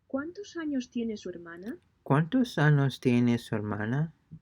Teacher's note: Pay close attention to the falling intonation at the end of the question.